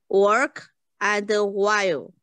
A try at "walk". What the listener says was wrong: No, ▁不 是 ▁work, ▁是 不 是 ▁R, ▁是 ▁walk. ▁记 得 不 是 ▁R, ▁不 卷 舌 。